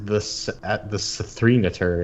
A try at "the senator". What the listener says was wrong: Yeah, well, you don't have to pronounce the three. It's just the senator. Yeah, the three is silent, so it's just the senator at .tumblr.com.